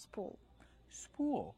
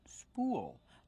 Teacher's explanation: we pronounce with a long ooh plus a dark L